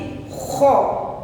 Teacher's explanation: Ada getaran. Lidah menyentuh pangkal tenggorokan. Kho. Langit-langit di mulut kita tetapi tidak yang di luar, agak ke dalam.